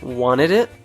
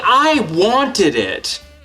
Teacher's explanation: we usually reduce or remove the t sound when it's after an n sound